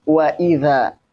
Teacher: Waw ada di bibir. Huruf termasuk syafatain ya. Syafatain ada di dua bibir.